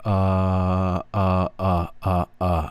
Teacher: ah like ah it's a way down in the throat and there is no aa or all or any kind of rounded sound with your mouth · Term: thinking cloud